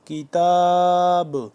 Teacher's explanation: جب کتاب کریں گے وقف کریں گے تو با ساکن ہو جائے گا، تو یہاں پہ قلقلہ آئے گا کیونکہ قلقلہ حرف میں سے با آ گیا، ٹھیک ہے۔